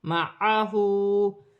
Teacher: ہاں پر الٹی پیش ہے، ایک الف کی مقدار کھینچ کر پڑھا جائے گا